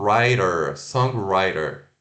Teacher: Só falando lá que o T e o D às vezes tem o som de R